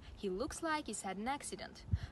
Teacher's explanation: the h sound isn't usually pronounced